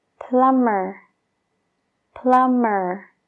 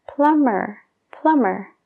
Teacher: fíjate bien la última parte es mer entonces esa B Es como si no existiera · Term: la B no se pronuncia